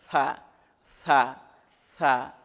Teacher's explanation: সা জিহুবার আগা থেকে নরমভাবে আদায় হবে